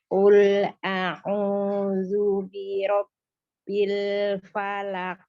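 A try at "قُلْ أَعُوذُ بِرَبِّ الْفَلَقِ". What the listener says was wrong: Ya, jangan lupa ya ketika zal dhamma ingat dulu ujung lidahnya dikeluarkan dulu baru mengalir mulut bibirnya maju secara lembut pengucapan dhammahnya. Zu. Nah, gitu ujung lidahnya dikeluarin dulu. Nah, baru bibirnya maju ya. Jadi jangan selalu bersamaan itu nanti ujung lidahnya nggak keluar.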